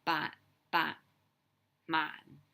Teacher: the ending isn't really pronounced like we wouldn't say bot like the hard t in english or the bach a hard k it's just more like so